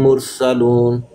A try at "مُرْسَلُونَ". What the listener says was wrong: را کو مفخم پڑھنا ہے.